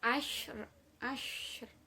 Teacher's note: Shin di sini termasuk huruf hamas, yakni sedikit berdesis ketika mengucapkannya.